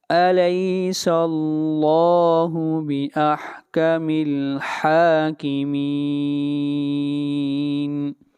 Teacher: حاکمین، ہا کو کھینچ کر پڑھیں گے ایک الف کے برابر